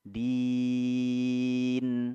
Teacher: Kita panjangkan 6 harokat. Ya. Ini tergantung ritme bacaan kita. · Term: mad arid lis sukun